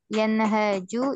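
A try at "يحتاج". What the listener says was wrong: Bukan yan. Yah, taju.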